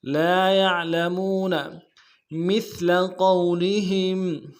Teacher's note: قوف کو موٹا ادا کرتے واو کے ساتھ ملانا ہے، واو لین بغیر کھینچے پڑیں گے · میم کو سا کے ساتھ ملانا ہے، سا کو باریک ادا کریں گے